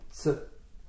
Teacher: Parce que le S, c'est un phonème sourd, et le T aussi, c'est un phonème sourd. Donc les deux ensemble se prononcent bien.